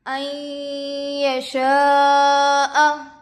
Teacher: نون ساکن کے بعد حروف یرملون میں سے یا دوسرے کلمے میں آ کر ہے، غنّے کے ساتھ ملا کر پڑھیں گے · یا پر زبر کی حرکت ہے، جلد پڑھے۔ الف سے پہلے زبر ہے، الف مدہ ہوگا، حروف مدہ کے بعد حمزہ اسی کلمے میں ہے، مد متصل ہوگا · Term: ادغام مع الغنہ